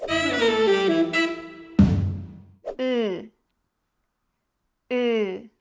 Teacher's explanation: this is a close back unrounded flat vowel put your tongue up close to your palette now push it back keep your lips neutral